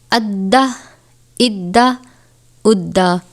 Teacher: یہ دال یہاں پہ حروف قلقلہ میں سے تھا، جس کو پڑھتے وقت جماؤں کے ساتھ اس کو ادا کرتے ہیں